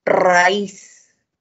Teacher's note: En raíz la mayor fuerza de voz está en la I, por lo tanto debo tildar. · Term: hiato acentual